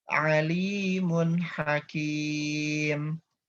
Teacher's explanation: Di sini tanwin bertemu dengan huruf H ya. Tanwinnya jelas, tidak ditahan, tidak digunakan, langsung ke huruf H.